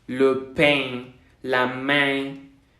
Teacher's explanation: Sí se va a hacer como una E nasal.